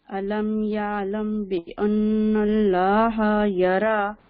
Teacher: أرأيت إن كان على الهدى أو أمر بالتقوى أرأيت بالتقوى کلکلا کریں نا او أرأيت إن كذب وتولى ألم يعلم بأن الله يرى بأن اللہ نون کے اوپر غنہ بھی کرنا ہے اور اللہ کو فل ماؤتھ بھی پڑھنا ہے. لام جلالہ ألم يعلم بأن الله يرى كلا لئن لم ينتهي لام نون کی بالکل بھی آواز نہیں آنی چاہیے یہاں پہ.